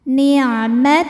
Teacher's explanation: Lam pada lafaz Allah atau lam jalalah dibunyikan secara tafkhim.